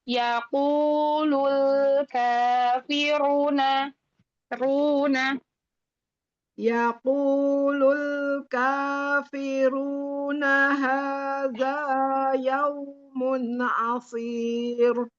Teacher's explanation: Lam sukunnya jangan dihentak.